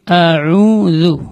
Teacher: A dia terletak di tengah-tengah, terletak di pangkal tenggorokan, yaitu aqsal halq.